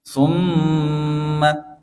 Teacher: pada huruf mim yang bertasydid summa, ini dibaca gunnah